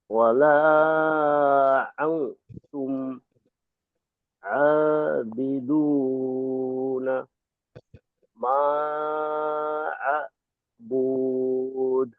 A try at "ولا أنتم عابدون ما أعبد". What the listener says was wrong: শেষে টান হবে না, আর একটু মাঝে একটু হালকাই আছে উচ্চারণ। শেষে একটু টান হয়ে গেছে, এখানে টান হবে না।